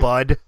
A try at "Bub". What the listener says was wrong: Bub, it's Bub, not Bud. Bub.